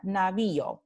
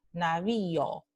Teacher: Y tenemos la vocal alta y en primera posición y luego la vocal abierta o en segunda posición. Por eso se llama un hiato creciente, porque la vocal fuerte O está en segunda posición.